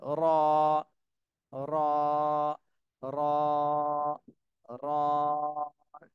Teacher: র একটু মোটা করে এক আলিফ টান দিতে হবে